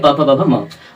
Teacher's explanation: प वर्ग, प वर्ग, प वर्ग का उच्चारण कहां से होगा, ओठ, यानी प जब आप प बोलते हैं, फ बोलते हैं तो ये दोनों ओठ जो होता है एक दूसरे से टकराता है